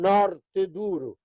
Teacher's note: norte é con o aberto